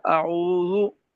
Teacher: होंठ को गोल करेंगे तो वाव मारूफ हो जाएगा